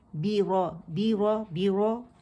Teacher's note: را موٹی ہے، با مشدد ہے آگے، اور با باریک زیر کے ساتھ آواز نیچے جائے گی